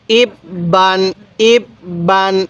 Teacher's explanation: এই তানবিনের উচ্চারণ বাংলায় দন্তন্য উচ্চারণ করব